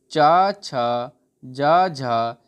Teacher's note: ये चारों वर्ण स्पर्श संघर्षी व्यंजन होते हैं